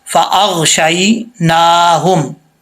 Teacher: یہ ہا جو ہے اس کا تعلق سینے کی طرف ہے، حلق سے نہیں ہے، اس کو بھاری آواز کے ساتھ پڑھیں گے